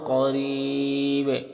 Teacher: اور را کے نیچے زیر ہے تو را کو باریک پڑھیں گے · اور یہاں پر وقف کریں گے تو مد عارض وقفی ہوگا اور با میں قلقلہ بھی ہوگا